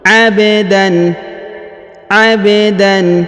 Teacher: Huruf ba dipantulkan atau dikolkolahkan karena berharokat sukun.